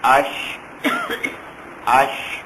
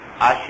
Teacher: شین کی آواز منہ میں پھیلنی چاہیے